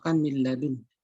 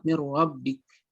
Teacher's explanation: tidak ada penyertaan gunnah atau masuk ke dalam hidung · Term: idgham bila gunnah